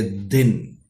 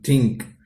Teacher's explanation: consonant sounds are produced by the blade of the tongue and touching the upper teeth, blade part of the tongue, and it touches to the upper part of the tongue. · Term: dental sounds